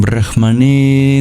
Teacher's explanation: That's at the end of Om and The N with the dot under it, you curl your tongue back. Instead of touching your teeth to produce the N, you curl your tongue back on the hard palate. Dot below the R means it's rolled.